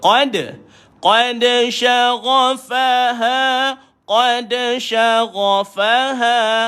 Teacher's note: Sya ada tafashi bunyi dia. Tafashi, berhamburan. Antara sifat utama bagi shin.